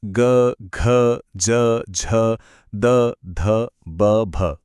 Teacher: तो ग बोलते वक्त जो कंपन महसूस हुआ था ना, बस उसी को कहते हैं घोष ध्वनि। मतलब ये वो आवाजें हैं जिन्हें बोलते टाइम हमारे स्वर तंतु यानी कि वोकल कॉर्ड्स वाइब्रेट करते हैं। ये आवाजें थोड़ी सॉफ्ट और गूंजने वाली होती हैं।